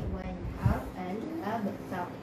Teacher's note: ra tu kalau mati, sebelum tu baris atas, sebelum tu baris depan dhammah, maka ra tu akan dibaca dengan tebal.